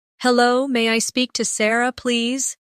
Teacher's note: Notice how may I sounds like maya in fast speech.